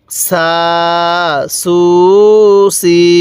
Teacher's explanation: সিনের আওয়াজটা একটু চিকন করে পড়ব। দেখুন জবরের পরে খালি আলিফ এক আলিফ টান দিছি, পেশের পরে ওয়াও সাকিন এক আলিফ টান দিছি